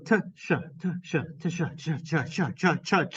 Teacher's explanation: an affricate is it's a special combination of a plosive that immediately moves into a fricative. So for example, the sound cha, as in cheese, is actually a combination of the sound ta and the sound sha.